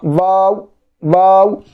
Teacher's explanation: واو کو کھینچنا، آخری میں او کی تھوڑی آواز آنا